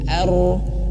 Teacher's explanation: tebel tapi getarannya itu volumenya itu kecil gitu bukan keras getarannya itu volumenya kecil sudah seperti itu itu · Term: huruf ro